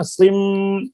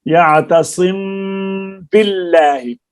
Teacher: یعنی ہونٹوں کو بند کر کے ناک میں چھپا کر ادا کریں گے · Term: غنہ کے ساتھ اخفا